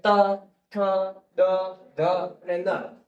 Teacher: દંતવ્ય એટલે તો કે દાંતને તમારી જીભ અડી જશે